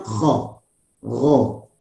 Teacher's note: Infitah. Nah, karena dia bukan itbaq, ya, karena perut lidah tidak naik ke atas, nempel ke langit